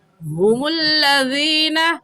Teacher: ہا کا مخرج یہ ہے کہ حلق کا آخری حصہ جو سینے کی طرف ہے، اس سینے والے حصے سے ہا نکال کر پڑھتے ہیں